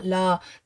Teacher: ở vị trí phụ âm cuối ở vị trí party thì chúng ta sẽ chỉ đọc là là l thôi và L uốn cong lưỡi lên các bạn nhé